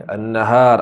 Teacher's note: alif lam asy-syamsiyah, jadi dengunglah nun sabdu tu